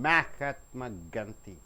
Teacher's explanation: Maha, the first syllable should be stressed because it is a noun.